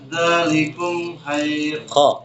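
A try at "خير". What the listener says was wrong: Bukan ha.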